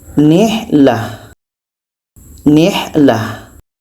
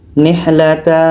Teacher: ta marbuto tanwin atas di akhir berubah menjadi huruf H yang berbaris sukun atau mati.